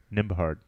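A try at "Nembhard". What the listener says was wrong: Nimhard. You pronounce the B? Nimhard. Nimhard. You put an extra syllable in there almost.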